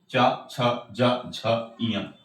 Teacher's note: इसको हम लोग तालु से बोलते हैं। इसका उच्चारण स्थान तालु होता है।